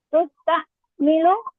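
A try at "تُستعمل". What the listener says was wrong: fathah sebelum akhir. Fathahkan sebelum akhir.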